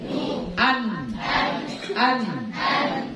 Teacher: kalau dia nun baris sukun ada gunnahnya sedikit